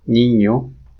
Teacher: it n with a tilde on top of it which is stands for the palatal nasal it occurs very commonly in spanish words